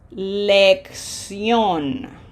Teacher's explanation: We have a graphic accent, so pronunciation emphasis is easy, and we say lección. So the double C ends up sounding like an X because this C has a K sound, and this C followed by an I has an S sound.